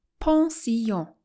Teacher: with as much of the nasal twang for the two ends as you can muster don't accent the first syllable but dwell a little on the last